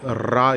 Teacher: நாக்கு சற்று உதறல் கொண்டு ரா என்று கூற வேண்டும்